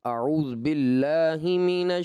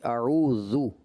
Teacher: جو ذال پہ ضمہ ہے اس کو خوب واضح کر کے پڑھیں گے